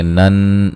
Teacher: نون مشدد پہ غنہ ضروری ہے، الف مدہ ہے، اللہ کو موٹا ادا کریں گے۔ نن، نون مشدد پہ غنہ ضروری ہے اور یہ الف مدہ ہے